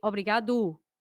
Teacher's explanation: I tend to kind of accentuate the last syllable for example instead of me saying Obrigado I say Obrigado you